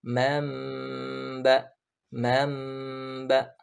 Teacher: Kemudian kita beranjak kepada iqlab, atau sebagian juga ustadz atau ulama menamai dengan iqlab ini dengan qalb, yaitu berganti, yang dimana ketika huruf nun sukun atau nun mati atau tanwin bertemu dengan huruf ba, ya maka nun tersebut dirubah menjadi mim disertai dengan adanya ikhfa, ya di situ disertai dengan gunnah ketika bertemu huruf ba tersebut. Contohnya man ketemu ba berharokat fathah, bukan man ba tapi mamba, mamba, seperti itu.